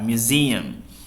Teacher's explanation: Jadi z-nya yang ditekan, museum.